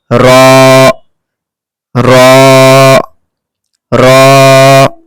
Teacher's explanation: র উচ্চারণ করার সময় আমাদের ঠোট গোল হবে না আমাদের ঠোট একদম ফাঁকা চওড়া থাকবে।